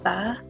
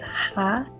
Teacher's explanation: you can feel the vibration at the beginning, ba. Whereas ha, you don't feel vibration at the beginning.